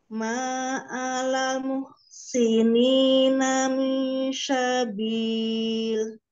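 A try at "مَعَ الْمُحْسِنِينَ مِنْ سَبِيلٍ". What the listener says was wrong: Ya, tipis. Nah, ini ke belakang gigi seri bawah ya. Sama dengan Zai. Ya, nanti ditipiskan lagi SIM-nya ya, Bu.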